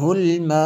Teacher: یہ جو مد ہے یہ مد متصل ہے کیونکہ حمزہ اسی کلمے میں ہے